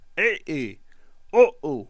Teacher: عین ہلکی حروف ہے اور اس میں درمیانی حلق سے ادا ہوتا ہے، اسی لیے یہاں پہ جو آواز ہے اس میں بھی ہلکا سا کلکلا پایا جائے گا.